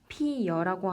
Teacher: 여기를 보시면 피어라고 발음하는 것도 맞지만 피여라고 하여 반모음 이가 더해진 현상을 볼 수 있습니다. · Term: 반모음 첨가